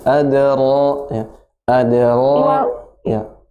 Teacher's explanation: Kalau bisa lebih tebal ro-nya.